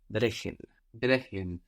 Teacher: So here the CH is soft now because we have the E before